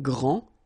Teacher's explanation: this first form here for the masculine, grand, so you don't pronounce the final D, will be exactly the same as the plural form for the masculine, grand.